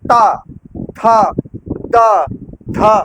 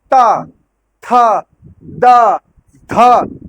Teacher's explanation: ता बोलने के लिए जो जीभ आपकी है जीवा जो आपकी जीभ है टंग है वो ऊपर वाले दांत के पीछे जाकर के टच करेगी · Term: दंत्य